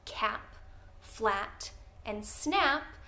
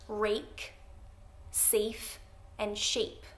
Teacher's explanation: the first three hopefully you noticed had the short vowel ah and the next three had the long vowel a